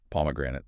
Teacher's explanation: A really heavy stress on that first syllable. P. If you misplace it, if you put it on the third syllable, which learners sometimes do, the word becomes almost impossible for a native ear to understand.